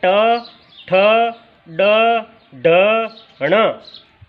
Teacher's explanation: तीसरा उच्चारण स्थान है मूर्धा। मूर्धा तालु से थोड़ा और ऊपर मूर्धा है